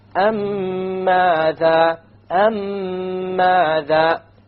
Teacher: You have a ghunna on the meme, and you will make the merging or the idgham, and there will, in the Quran it will be written with a shadda, so you'll even know that there will be a merging here. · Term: idgham shafawi